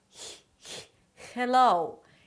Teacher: The 'g' sound happens when the tongue is high up and the body of the tongue almost touches the soft palate · So whenever it appears in American English, people tend to create a different sound for the H, which is instead of a 'H' sound, more of a 'g' sound.